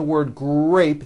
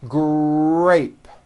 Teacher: in the word grape, the R sound is stronger and you even hear it more than the G sound. Grape. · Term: R blends